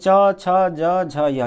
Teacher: यानी च वर्ग में च छ ज झ य, ये सबका उच्चारण स्थान किससे होगा, तो तालु से होगा। और यहाँ पर य लिखा है, य का भी उच्चारण स्थान क्या होगा, तालु से है।